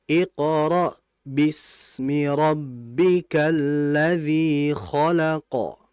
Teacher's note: Di situ ada sin. Sin mati itu bersifat namanya adalah rikha atau rakhah. Jadi dialirkan dulu. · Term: rikhawa